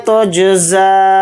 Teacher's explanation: نعمت تجزا، تا کو جیم کے ساتھ ملا کر پڑھیں گے، زا کے اوپر کھڑا زبر ہے، زا کو تھوڑا کھینچ کر پڑھیں گے · اس کے اوپر مد منفصل ہے، اس کو 3 الف کی مقدار بھی کھینچ کر پڑھ سکتے ہیں